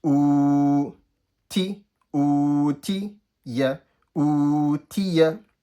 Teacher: So the only thing that was stretched for me was the u, and the ti and the ya was quick.